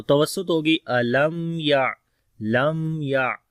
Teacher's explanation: تو میم کے اندر تھوڑا سا لمبا ہوگا، زیادہ نہیں